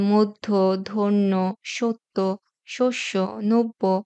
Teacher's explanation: শব্দের মধ্যে বা শেষ বর্ণের সাথে যদি জ ফলা যুক্ত থাকে তাহলে সেই বর্ণটি দুবার উচ্চারিত হয় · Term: দীপ্ত উচ্চারণ